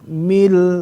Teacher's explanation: itu huruf syafatani, dua bibir